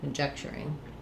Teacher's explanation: Stress is on the ject here, so my letters C-O-N are going to have the sound, the schwa, unstressed, and then the letter J says the j sound, the E says conjecture, we're going to have an unreleased K there, the TU, conjecture, is going to have a ch sound, or I didn't leave myself enough room here, and then my ing ending.